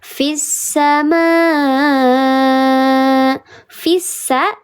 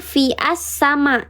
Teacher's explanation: Jadi ketika dia di tengah kalimat tidak dibaca hamzahnya tidak terbaca. Tapi ketika dia di awal kalimat hamzahnya terbaca. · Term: Hamzah wasal